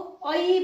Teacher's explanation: यसैगरी ऐ, यो ऐ भन्ने स्वर वर्ण चाहिँ अ इ यो 2 अक्षरका रूपमा आउँछ, 2 स्वरको रूपमा आउँछ, त्यसैले यसलाई पनि ऐलाई पनि हटाइएको छ। यो अ र इ मिलेर ऐ हुने हुँदा यो 2 स्वर वर्णका रूपमा देखिन्छ